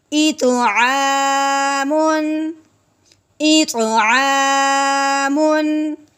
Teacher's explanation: تنوین پہ غنّہ نہیں کریں گے، بغیر غنّے کے اظہار کے ساتھ پڑھیں گے، ٹھیک ہے۔ میم دو پیش من، ایتو عامن، ایتو عامن۔